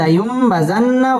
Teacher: লায়ুম বাজান্না ওয়াজিব গুন্না হরকতের বামে নুনের মধ্যে তাসদীদ আসছে গুন্না করে পড়তে হবে।